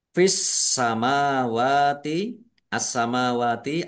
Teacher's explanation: Karena tidak dibaca langsung masuk ke huruf berikutnya yaitu sin. Ditandai sinya ada tasdidnya. Sinnya dibaca dobel. Mim fathah berdiri, mad thobi'i. · alif lam syamsiyah. Karena tidak dibaca langsung masuk ke huruf berikutnya yaitu sin. Ditandai sinya ada tasdidnya.